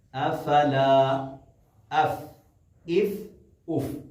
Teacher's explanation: ثنایا علیا کہتے ہیں، جو 2 دانت سامنے ہیں ان کے سرے نچلے ہونٹ پہ رکھ کے پھونک مارتے ہیں تو فا ادا ہوتا ہے۔